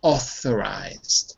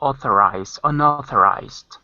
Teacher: Careful, because it's not ow, it's all.